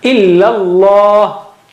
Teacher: Okay, and Allah is thick. The word Allah, the lam of word Allah is thick.